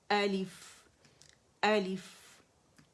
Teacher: اچھا الف کا حمزہ اقص الحلق سے نکلے گا